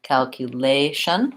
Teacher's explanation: the stress on that is on the syllable lay